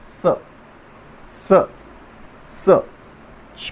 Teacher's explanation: इसका उच्चारण श, जो पहला श है श, इसका पीछे से आवाज़ आती है, और ये श है ये मिडल से आता है, और ये वाला स है दंत्य, इसके साथ थोड़ा सा दंत का प्रयोग होता है